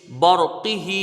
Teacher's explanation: را ساکن سے پہلے زبر ہے، را یہاں پر پر پڑی جائے گی